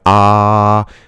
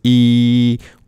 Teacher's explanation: if you say something like ah, the back of your tongue is actually flat and it's down, right? Yeah. Versus e, the tongue is up.